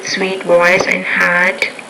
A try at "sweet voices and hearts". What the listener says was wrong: you're not putting your essence on the ends of your nouns so be careful about that